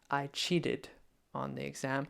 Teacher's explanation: So there are people who use a softer T, almost like a D there.